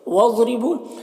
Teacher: ضاد حروف مستعلیہ میں سے پر پڑھیں گے، را کے نیچے زیر ہے، را کو باریک پڑھیں گے۔ بو میں واو مدہ ہے، ایک الف کے برابر کھینچیں گے۔